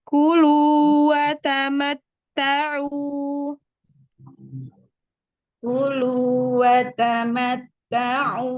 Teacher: ada fathah yang berjejer. Buka semua, ratakan bukaannya.